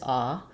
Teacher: a central open vowel which we don't have in English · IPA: /a/